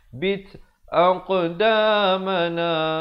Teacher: Amrina sa di hujung lidah. Wasabbit, bunyi hamaskan pada ta ni, bunyi angin